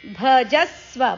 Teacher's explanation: ಭ ಅಕ್ಷರದ ಮೇಲೆ ಆಘಾತ ಇದೆ